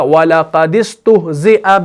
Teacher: اس میں اب صورت یہ تھی کہ اگر پہلا والا ساکن حرف مدہ ہو تو اس کو گرا دیتے ہیں، حرف مدہ نہ ہو تو اس کو زیر دے کر پڑھتے ہیں۔ تو یہاں پر دال آپ کا حرف مدہ نہیں ہے تو اس کو زیر دے کر پڑھا گیا اور اس کے ساتھ ملا دیا گیا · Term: اجتماع ساکنین